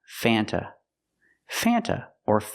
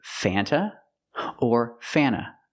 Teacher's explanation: American would ever say Fanta it's pronounced Fanta Fanta or F sometimes you don't hear the T because you have n between vowels so you'll hear Fanta or F but never Fanta not in